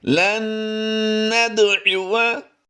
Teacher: दाल पर हमने कलकला करना है, दाल साकिन है